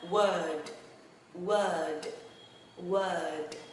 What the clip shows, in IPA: wɜːrd